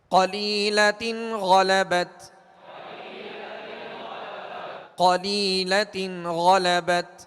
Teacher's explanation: قاف کو پر پڑھیں گے حروف مستعلیہ میں سے ہے. لام یا زیر لی، یہاں یا مدہ ہے، یا ساکن سے پہلے زیر ہے لہذا یا مدہ ہوگی.